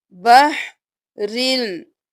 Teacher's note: اب جب ہم ملائیں گے تو ہم بحرن نہیں کریں گے، را کو لام کے ساتھ ملائیں گے، بحرل۔ اب لام ہو گیا رل کے ساتھ، پھر لام پیش جیم پہ تشدید ہے، جیم سے ملائیں گے، لام کو جیم کے ساتھ، پہلے را کو لام کے ساتھ ملایا، دوبارہ لام کو اپنی حرکت کے ساتھ پڑھ کر جیم کے ساتھ ملایا، رل لج، رل لج۔